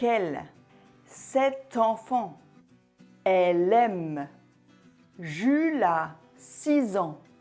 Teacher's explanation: le son de la consonne finale du premier mot a été transféré au début du mot suivant cette technique s'appelle l'enchaînement c'est un des aspects de la prononciation